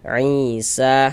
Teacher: Ee sehingga sa dibaca panjang. Mad thobi'i panjangnya dua harakat.